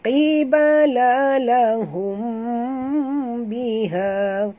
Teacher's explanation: mim mati bertemu ba, ikhfa hakiki dengung